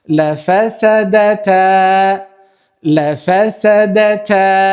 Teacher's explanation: Shohim elifin që ka ardhur pra i pashënuar dhe para saj kemi zanoren fetha e cila kthehet normalisht në a dhe zgjatet pra dy kohë